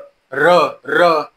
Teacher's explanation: तुमची जी आपले जे मूर्धा आहे त्याला टच होईल, स्पर्श होईल.